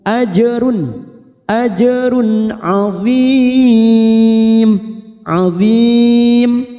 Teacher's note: idhar halki, kita baca jelas tanpa mendengung